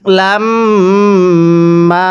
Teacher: এরপরে খুল জান্নাতা হ্যাঁ কিভাবে পড়ব আম হাসিবতুমুল জান্নাতা এরপরে ওলাম হ্যা এই মিমের মধ্যে আমরা আগে গুন্নাহ করব এরপরে আমরা মিম এর মধ্যে এক আলিফ টেনে পড়ব কারণ মিম ননে তাজদিদ গুনাহ করা ওয়াজিব তাহলে কিভাবে পড়ব লাম্মা এরকম ভাবে পড়বো।